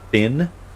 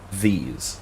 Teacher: as in thin versus these, right? The one is like whispered, the other is voiced, right? Thin, your vocal cords aren't moving. · Thin, your vocal cords aren't moving. These, your vocal cords are moving